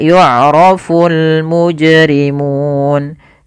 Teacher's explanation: Alif lam qamariyah yaitu alif lam yang dia dibaca dengan jelas suara lamnya dan dia ada tanda di atas huruf lam, tanda seperti ini, yang artinya lamnya dibaca dengan jelas.